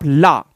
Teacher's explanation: टक से जीव आगे आती है और हवा पार्श्व भाग से निकल जाती है, इसलिए यह पार्श्व भाग हो गया। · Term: पार्श्विक व्यंजन